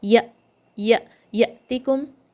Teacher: You did not say any haraka, and there's no air coming, and there's no sound coming anymore. It just suddenly stopped. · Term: sukoon on Hamza